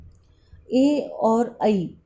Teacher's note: कंठ, तालु और जीभ से इनका उच्चारण किया जाता है, इसीलिए इन्हें कंठ और तालव्य श्रेणी में रखा जाता है